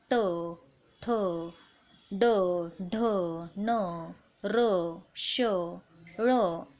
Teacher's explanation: जिभेचा शेंडा जो असतो या मूर्धेला जाऊन भिडतो, त्यांना मूर्धन्य वर्ण असे म्हटले जाते